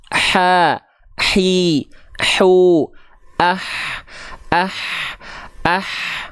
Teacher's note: huruf ha kecil juga sama dia punya sifat hams tapi kadarnya mengalir nafas